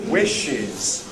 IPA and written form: ˈwɪʃɪz (wishes)